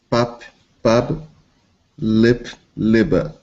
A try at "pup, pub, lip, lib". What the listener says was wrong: Good. Great.